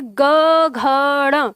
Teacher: जैसे ही आप बोलेंगे ग घ ड़, तो वाइब्रेशन आपकी उंगली तक आ जाता है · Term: कंपन